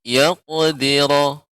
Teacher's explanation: Pada kata qaf qalqalah ya, qalqalah pada huruf qaf ini harus lebih tebal membacanya